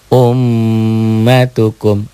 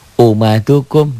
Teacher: dengan yang ini mim tuh di laatennya ada kan m-nya tiga mim ditahan dobel dan dengung